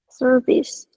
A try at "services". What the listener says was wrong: Services. Don't forget the S. If you forget the S will go back home crying.